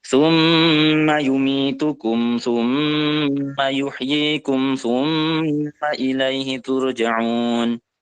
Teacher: gunah itu didengungkan yang artinya ditahan berapa harakat dua harakat